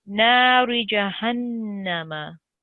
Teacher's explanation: Whenever Noon Mushaddid comes, you need to do a nasal sound, which means sitting on it for 2 seconds and emitting a nasal sound.